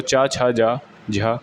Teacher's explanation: चा छा जा झा जो होता है वो उच्चारण तालु होता है